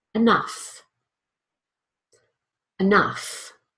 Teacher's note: so that first syllable is almost non-existent